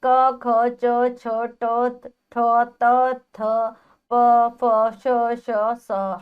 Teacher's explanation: जिन वर्णों का उच्चारण करते समय स्वर तंत्रियों में कंपन नहीं होता उन्हें अघोष व्यंजन कहते हैं